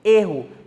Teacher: pronuncio erro mais fechada ainda um som vocálico mais mais fechadinho · Então eu vou pronunciar esse E de uma forma mais fechada. Na primeira eu pronuncio erra, na segunda, como substantivo, eu pronuncio erro, mais fechado.